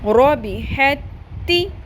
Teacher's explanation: اب یہاں پر دو دفعہ تا لکھی ہوئی ہے، ایک تا کے اوپر جزم ہے اور ایک تا کے اوپر تشدید ہے. یہاں پہ ح کی جو زبر ہے وہ تشدید والی تا کے ساتھ مل جائے گی اور جس تا کے اوپر جزم ہے وہ سائلنٹ ہو جائے گی. ٹھیک ہے، ح زبر تا حت، تا زیر تی، رابی حتی، تا کو پر نہیں کرنا یہاں پہ.